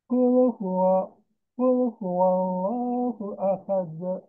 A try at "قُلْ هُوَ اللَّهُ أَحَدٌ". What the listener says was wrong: Sedikit satu kali lagi di sini lamnya agak ditekan, Pak. Jadi ada apa ya? Kalau huruf lam itu sifatnya tawassul, sedikit mengalir. Qul huwal. Nah, itu ada mengalir dulu. Qul huwallahu ahad.